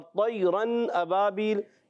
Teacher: تنوین کے بعد حمزہ آ گیا، اظہار ہلکی کا قاعدہ ہو گیا